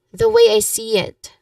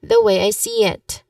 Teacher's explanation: pronunciation wise you stress on the word see